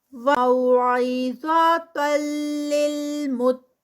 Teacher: عِظَا، ظا heavy ہے یہاں پر. تَلِّل، آگے تنوین ہے اور پھر وہ لام میں مرج ہو رہی ہے تو ادغام آئے گا، لیکن یہ بھی ادغام وداؤٹ غنہ. لِلْمُتَّقِينَ، قاف ہیوی اور پھر آگے 4 counts کا اسٹریچ آئے گا سٹاپ پر.